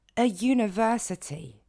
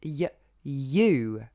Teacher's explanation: Mais an university, ça ne fonctionne pas, parce que ce U va se prononcer y, you. Donc on retrouve bien un son de consonne, le Y, y, you.